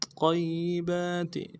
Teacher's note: یا کے اوپر تشدید ہے زور دیں گے